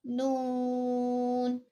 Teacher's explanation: جب زبان کے کنارے سامنے والے اوپر کے 6 دانتوں کے مسوڑوں سے لگتے ہیں تو یہ حرف نون ادا ہوتا ہے